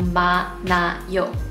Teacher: you don't hear the 히읗 sound at all because it's weakened by the much stronger 니은 sound